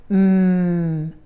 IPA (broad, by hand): m